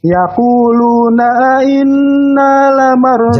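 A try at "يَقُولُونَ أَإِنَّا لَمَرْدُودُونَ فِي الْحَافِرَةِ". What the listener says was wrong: Jelaskan ya hamzah-hamzahnya. Yaquluna inna lamarduduna fil. Tebalkan lamar.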